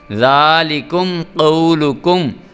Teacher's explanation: میم ساکن اور اس کے بعد قاف اظہار شفوی والا قانون اور قاف کو موٹا کر کے پڑھیں گے، غنہ نہیں کریں گے۔